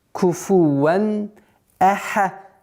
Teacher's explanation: Аль-изгар – ясность, то есть ясное произношение танвина перед хамзой и 6 остальных звуков, гортанных звуков.